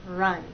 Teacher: With R, there's a gentle rounding of the lips, but you hold that position until you get to the next sound. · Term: R sound